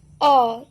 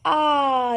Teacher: अ इसमें कम समय लगा। ये ह्रस्व स्वर में आ जाएगा। वही आ ज्यादा समय लग रहा है।